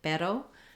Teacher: for the letter r in some other languages so for example in Spanish the word pero that R is a flap as well · This flap sound, which we call flap T in English, is used for the letter R in some other languages.